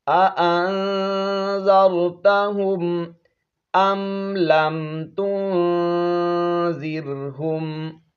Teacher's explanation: یہاں پر ہم نے اخفاء کرنا ہے، آواز کو ناک میں چھپا کر پڑھیں گے۔